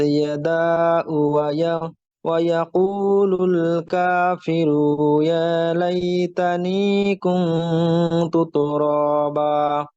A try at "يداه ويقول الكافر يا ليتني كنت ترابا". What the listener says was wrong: কাফি রুতে মাদ হয়ে গেছে, রুতে মাদ নেই, আরটা খেয়াল করেন।